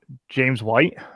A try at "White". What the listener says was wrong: Did you emphasize the H on that? Why are you emphasizing the H?